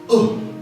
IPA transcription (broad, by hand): ʊ